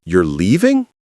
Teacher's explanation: Rising intonation, showing surprise. If you don't use rising intonation here, it doesn't sound like a question. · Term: Declarative questions